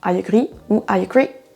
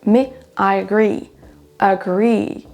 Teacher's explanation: Pour agree, c'est sur la deuxième syllabe qu'on accentuera, donc on n'aura pas I agree ou I agree, mais I agree.